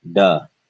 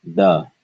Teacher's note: both of these are non-aspirated